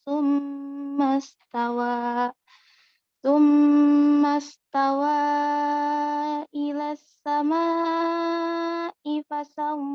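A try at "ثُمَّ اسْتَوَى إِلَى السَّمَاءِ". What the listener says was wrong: Di sini istawa sama as-sama berapa harokat? 6 ya, ya. Ulang dari sumastawa harus 6 harokat.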